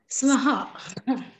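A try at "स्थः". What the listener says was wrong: It is Swaha. Visarga should be told.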